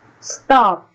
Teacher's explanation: There is no puff of air, unlike the word top.